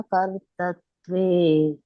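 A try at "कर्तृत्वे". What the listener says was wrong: ಕರ್ತೃತ್ವ ಅಲ್ಲ ಮಾತಾಜಿ ಕರ್ತರ ಅನ್ನಂಗಿಲ್ಲ ಅದಕ್ಕೆ ತ್ರು ಅಂತ ಕರೀತಾರೆ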